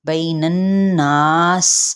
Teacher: نون کی اس زبر کو نون کے ساتھ ملائیں گے اور غنہ کریں گے، اور ساتھ ہی مد اصلی بالالف کا قاعدہ بھی ہو رہا ہے، جس کو ایک الف یا 2 حرکات کے برابر کھینچیں گے، بین الناس۔